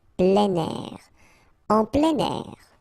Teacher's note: we tend to make the liaison plein air. Plein air.